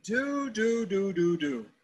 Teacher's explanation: Exhale slowly. Notice the tongue is touching the roof of your mouth, right to the front above the teeth.